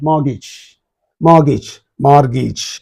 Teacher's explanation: T is silent both in the British pronunciation and also in the American pronunciation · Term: totally silent